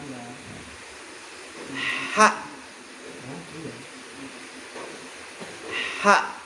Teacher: Ha itu berada di tengah-tengah tenggorokan. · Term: huruf tenggorokan